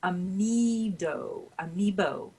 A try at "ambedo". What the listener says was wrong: No, not amiibo. Ambedo? there's a D in it.